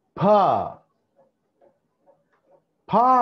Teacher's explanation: మొత్తం గాలిని రెండు పెదాలతో బంధించేసాం బయటికి రాకుండా. ఆ తర్వాత ఒకటేసారి గాలిని బయటికి వదిలేసాం.